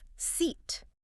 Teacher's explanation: It's a tense vowel, so it's more common. Your facial muscles engage, your mouth stretches wide laterally, almost like a forced smile, and the tongue raises high in the mouth. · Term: long E